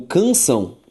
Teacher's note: a sílaba tônica de canção é a última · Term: oxítona